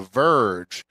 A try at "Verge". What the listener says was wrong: Not the Virgin, but the Verge.